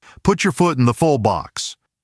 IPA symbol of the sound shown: ʊ